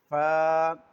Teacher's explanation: یہ اوپر کے دانتوں کے کنارے نچلے ہونٹوں کے تر حصے سے جب ٹچ ہوتے ہیں، آپس میں ملتے ہیں، تو پھر فا ادا ہوتا ہے۔ جیسے میں ادا کرتا ہوں فا، یعنی اوپر کے دانتوں کا جو کنارہ ہے وہ نیچے جو نچلے ہونٹوں کا تر حصہ ہے یہاں سے لگ رہا ہے، تو پھر فا ادا ہو رہا ہے۔